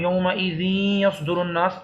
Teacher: نون اور یا دونوں کی آواز نکل رہی ہے مل کے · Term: ادغام